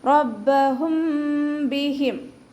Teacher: മീം സാക്കിനയെ മറച്ചു വെച്ചിട്ട് മണിച്ചോതാണ്. റബ്ബഹും ബിഹിം. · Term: ഇഖ്ഫാ ഷഫവി